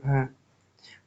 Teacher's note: ओष्ठ महाप्राण घोष व्यंजन है भ